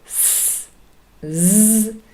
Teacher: our tongue forms a little Gap just near that alveolar Ridge so it doesn't really touch it there's no closure it just comes very close and forms a little Gap through which the air flows and creates this these two fricative sounds and z let's have